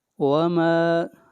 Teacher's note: اگلی آیت وما، ما کو لمبا کریں گے ایک الف کے برابر، یہ الف مدہ ہے